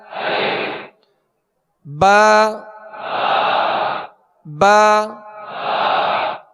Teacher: دونوں ہونٹوں کے تر حصے سے با ادا ہوتا ہے. اس کو با یعنی خشک حصے سے ادا نہیں کریں گے بلکہ با، نرم جو اس کا وہ تر حصہ ہے دونوں ہونٹوں کا اس سے با ادا ہوتا ہے.